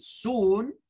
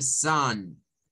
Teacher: Entonces esta suena a soon con el u, zoon, y esta suena a zan, parecido a un schwa